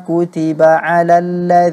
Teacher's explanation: juga sering terjadi pada banyak orang menyangka bahwa huruf isti'la itu suara yang kedengarannya semacam suara Oh itu dibantu oleh bibir padahal sebenarnya tidak itu sebenarnya terjadi karena lidah kita mengangkat ke atas